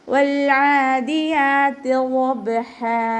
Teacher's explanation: വാദ് ഉയർത്തിച്ചരിക്കുന്ന അക്ഷരങ്ങളിൽപ്പെട്ടതാണ്, ഇസ്തിഅലാൻ്റെ ലെറ്ററാണ്, അപ്പോൾ ഇതിനെ നല്ലോണം ഉയർത്തിയിട്ട് തന്നെ പറയാൻ ശ്രദ്ധിക്കുക. ബ കൽക്കലയുടെ ലെറ്റർ ആണല്ലോ, അപ്പോൾ സുക്കൂനായതുകൊണ്ട് നമ്മൾ ഫുൾ സുക്കൂന് കൊടുക്കുക.